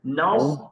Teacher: নাস নাস সদ মোটা হবে আরো